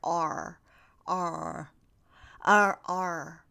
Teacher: the tongue goes up it's close to the center of the roof of my mouth